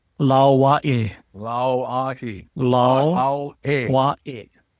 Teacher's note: See, the A in this last word is kind of pronounced Wa-E. This is the Okina, or the glottal sound. That's the punching sound.